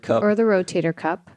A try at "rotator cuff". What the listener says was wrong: It's rotator cuff. Yeah, not cup. Cuff.